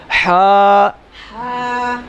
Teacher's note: حا کا مخرج ہے کہ حلق کے درمیان والے حصے سے ادا ہوتا ہے